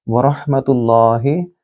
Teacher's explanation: रॉ को मोटा पढ़ेंगे क्योंकि ये तफ़ख़ीम है, रॉ के ऊपर ज़बर है। और हा को गले से बोलिएगा, वरहमतुल्लाहि।